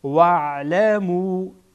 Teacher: مد منفصل هست به اندازه 3 حرکت سه الف آن را طولانی میکنیم